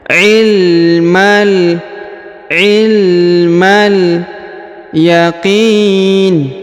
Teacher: huruf ma ya langsung disambung ke huruf lam yang berharakat sukun